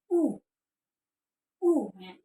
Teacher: Kemudian harokat dhammah monyong sempurna u ya gitu.